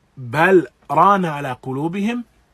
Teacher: Then they would make izhar of ra, that is, that they would manifest the ra, they would pronounce it and utter it clearly without merging the 2 letters